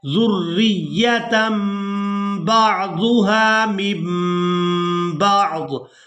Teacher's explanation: तनवीन में जो नून की आवाज़ है इसको हमने मीम के साथ बदल कर अदा करना है। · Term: इक़लाब